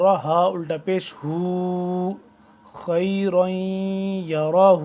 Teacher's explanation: الٹا پیش کی لمبائی بھی ایک الف کے برابر ہوتی ہے